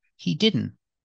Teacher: the t is between consonants so we don't really hear the T he didn't it's really a stop te you put the tongue